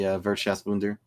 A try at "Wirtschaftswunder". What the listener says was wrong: Your pronunciation. You're just missing one S. It's the Wirtschaftswunder.